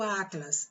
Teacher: Atlas, qual é a sílaba tônica? O A. Então, Atlas não é oxítona, Atlas é paroxítona.